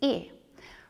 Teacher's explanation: When I make this sound, my lips are slightly spread, and my tongue is at the front of my mouth.